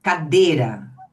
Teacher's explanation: Eu pus o circunflexo só para vocês verem que a gente fecha o e